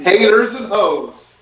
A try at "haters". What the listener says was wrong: Hater, not taters. Haters.